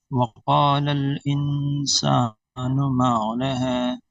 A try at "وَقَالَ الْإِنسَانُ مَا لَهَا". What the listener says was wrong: ہاں اس کو نا ہاں عین کی طرح نہ کریں. فقال الإنسان ما لها.